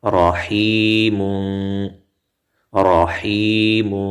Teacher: را کې تفخیم شو، را پورو ویلې شوه ځکه یې د پاسه زبر راغلی دی